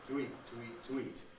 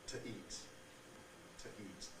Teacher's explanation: the glottal stop seems to function as a consonant in triggering the preconsonantal form of the weak form